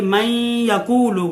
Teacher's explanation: جیسے من یقول، یہاں نون ساکن کے بعد حروف یرملون میں سے یا آ گیا ہے، تو یہ من یقول غنے کے ساتھ جو ہے ادغام ہوگا دونوں کو۔ ویسے ہے من یقول، تو یہ پڑھنا بڑا مشکل ہے، ثقل ہوتا ہے، تو یہ آسانی کے لیے جو ہے یہ قواعد بنائے گئے ہیں۔